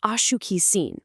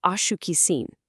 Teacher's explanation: lean heavily into the a at the very beginning. Slide right through shuki and land back on that familiar seen.